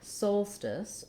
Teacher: we have first syllable stress. So my sol syllable is long and my stis syllable is short. Unlike most situations, often when we have letter O in a stress syllable, it's actually going to be the ah sound.